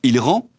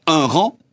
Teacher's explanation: Les groupes de lettres E plus N, par exemple il rend, et A plus N, par exemple un rang, se prononcent de la même façon.